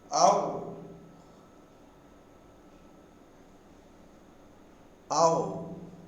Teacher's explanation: For the first element, the tongue is lax. For the second element, u, the tongue is tense. So the tongue changes from lax to tense position.